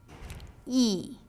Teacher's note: your lips will be spread like when you say cheese there will be tension on your cheeks your jaw will be raised almost completely and your tongue will be near the roof of your mouth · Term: long e sound